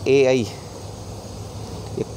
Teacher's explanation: ए, आई ये कंठ और तालु दोनों से बोले जाते हैं, इसलिए इन्हें कंठीय ताले भी कहते हैं।